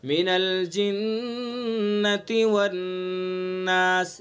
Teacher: जिन्ना के नून में गुन्ना करेंगे, वन्नास के नून में गुन्ना करेंगे